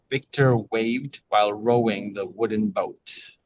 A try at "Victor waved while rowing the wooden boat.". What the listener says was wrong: A little more inflection.